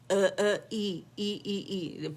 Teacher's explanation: ای sound یہ اقص الحلق سے نکلتا ہے. ای ساؤنڈ ای ای ای ای.